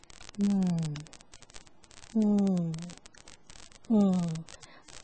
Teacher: 这个都是气流从鼻子发出来的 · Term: nasals